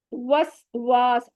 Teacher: वा कहते हुए हमने होंठों को बिल्कुल गोल करना है, अलिफ है उससे पहले जबर आ रहा है, अलिफ मद हो रहा है, टू काउंट जितना स्ट्रेच भी करेंगे।